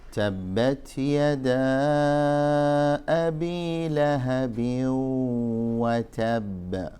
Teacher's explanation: عندما ينطق الإنسان التنوين الذي هو في الأصل نون ساكنة، النون الساكنة من طرف اللسان، عندما ينطق التنوين التي هي النون الساكنة ليدغمه في الواو، إذن سيستعد بضم الشفتين عند النطق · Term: إدغام بغنة